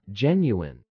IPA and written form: ˈdʒɛnjuɪn (genuine)